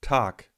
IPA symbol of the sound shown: k